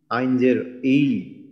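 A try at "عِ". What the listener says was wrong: আইনেরটাও আপনার আইন এবং হা এই দুটার কিন্তু আরেকটু চর্চা করতে হবে বাসায়। এই আইনও কিন্তু আমাদের গলার মাঝখান থেকে বা হলকের মাঝখান থেকে। আইনজের ই, আইনজের ই বলেন। তো আপনি দুইটা জিনিস একটা মাত্রা খেয়াল করবেন, হা আইন যে হলকের মাঝখানে, এই দুইটা আপনার একটু সমস্যা দেখতেছি আর কি।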